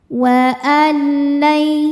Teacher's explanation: Selanjutnya ada hukum idgham bila gunah karena nun sukun bertemu lam. Cara bacanya nunnya dimasukkan ke lam tidak disertai dengung. Artinya jangan nahan ya. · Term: idgham bila gunnah